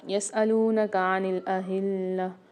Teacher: یہاں پر اہلہ میں ہا کی آواز واضح کریں گے کیونکہ یہ موٹا ہا ہے، اس کو بھاری آواز کے ساتھ پڑھتے ہیں اور لام کے ساتھ ملا کے پڑھیں گے۔